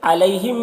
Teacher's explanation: علیہم میں یا، یہ یا لین ہے، اسے نرم آواز کے ساتھ جلد پڑھیں گے